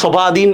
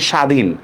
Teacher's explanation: বফলার কিন্তু কোনো উচ্চারণ হচ্ছে না